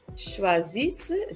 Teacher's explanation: the ENT at the end is not pronounced